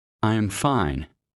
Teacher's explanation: Falling tone for statements. I am fine. Voice goes down.